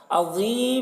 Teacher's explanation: ज़ा को पूर पढ़ेंगे, हुरूफ़ मुस्तालिया में से है और यहाँ पर वक्फ़ करेंगे तो मद्द आरिज़ वक्फ़ी होगा।